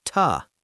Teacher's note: Yes, to is not important, so it becomes a schwa, ta.